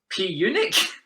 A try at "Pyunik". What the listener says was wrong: I think it's Unic. The P silent. It's Unic.